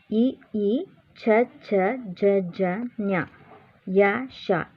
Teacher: ಇವು ಅಂಗಳಿನ ಮುಂಭಾಗದ ಸಹಾಯದಿಂದ ಹುಟ್ಟುವುದರಿಂದ ಇವುಗಳನ್ನು ತಾಲವ್ಯ ಅಕ್ಷರಗಳು ಎನ್ನುತ್ತೇವೆ